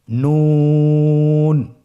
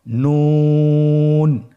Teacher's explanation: নুন হরফটি উচ্চারণের ক্ষেত্রে অবশ্যই পাতলা করে উচ্চারণ করতে হবে এবং তিন আলিফ টেনে পড়তে হবে।